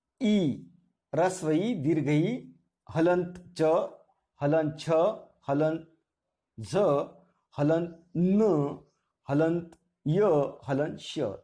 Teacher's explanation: इनका उच्चारण करते समय जुबान का स्पर्श तालव्य से होता है।